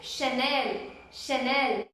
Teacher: The CH is sha. You have to pronounce it as sha